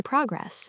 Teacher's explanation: Progress as a noun. Stress the pro.